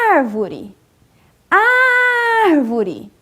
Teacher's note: as proparoxítonas são palavras que a antepenúltima é que é a sílaba mais forte